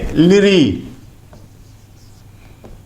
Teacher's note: लिरी का उच्चारण स्थान जो है वह दंत है और इसीलिए इसको दंत्य कहा जाता है